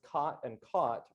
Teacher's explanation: for me, the words cot and caught are not pronounced with the same vowel